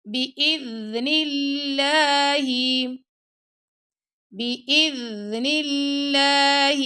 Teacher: اللہ کی لام سے پہلے کسرہ آ رہا ہے نا، نون کے نیچے یعنی زیر آ جائے تو اللہ کی جو لام ہے وہ باریک پڑی جائے گی